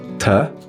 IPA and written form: tə (To)